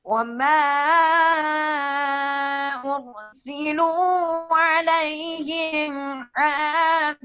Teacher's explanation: یہ حافظین میں ضا میں یہ ادنا درجہ کی تفخیم ہوئی ہے کیونکہ حرف تو پر ہے لیکن اس کے نیچے زیر آ گئی